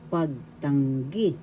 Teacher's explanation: The third syllable has the accent, pagtanggi.